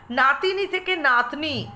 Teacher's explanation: যেহেতু মধ্যবর্তী স্বরধ্বনি লোপ পেয়েছে তাই একে মধ্যস্লোপ বলা চলে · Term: স্বরলোপ